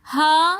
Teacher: ہاذ الذی کے اندر کھڑا زبر آ رہا ہے ہا کے اوپر تو اس لیے ہم ہا تھوڑا سا کھینچ کر پڑھ رہے ہیں